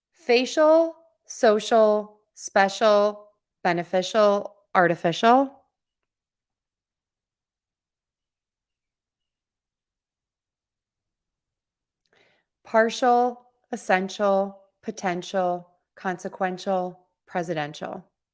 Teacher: That CIAL and TIAL is only one syllable, one beat